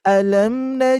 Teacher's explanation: tidak terlalu panjang yaitu Mad panjang dua harakat